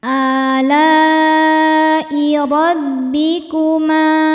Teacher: Maka lamnya panjang, boleh 4 boleh 5 harokat. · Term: mad wajib muttasil